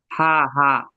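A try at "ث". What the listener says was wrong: না না, হা নাই, সা। জিভের আগা উপরের দাঁতের আগায় লাগিয়ে সা উচ্চারণ হবে। একদম জিভেরও আগা হতে হবে, উপরের দাঁতেরও আগা হতে হবে, তাহলে এর উচ্চারণটা সহিভাবে হবে।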